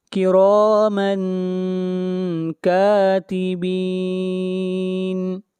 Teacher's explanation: یہاں پر تنوین کے بعد کاف ہے، اخفا ہوگا